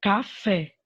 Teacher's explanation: aquela palavrinha em que a última sílaba é tônica, é mais forte. Por exemplo, a palavrinha café. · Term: oxítonas